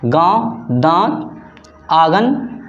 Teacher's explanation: देखिए नाक और मुंह दोनों को परस्पर आवाज़ आती है, नाक और मुंह से।